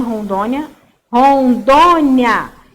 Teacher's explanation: Então, eu tenho 3 sílabas. A penúltima sílaba é acentuada e é uma paroxítona, porque é a sílaba tônica.